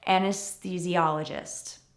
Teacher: Anesthesiologist is not pronounced with the typical TH sound of th or v. We actually have a T sound here, even though it's TH.